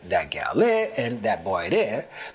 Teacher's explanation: Gullah speakers also drop consonants for vowels where the two words meet. For instance, in the sentences that gal there and that boy there, the word for there, de, adds or subtracts the D depending on if there's a consonant or a vowel preceding it.